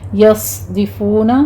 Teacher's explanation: صاد کو پر پڑھتے ہوئے سیٹی کی آواز کے ساتھ ہمس ہوگا اس پر